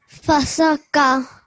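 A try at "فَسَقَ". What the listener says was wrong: Yeah. So this qaf is qa, fasaqa.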